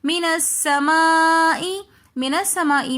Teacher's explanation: مِنَ السَّمَاءِ میں مد متصل ہو رہی ہے تو اس لیے ہم اس کو 3 الف کی مقدار کھینچ کر پڑھیں گے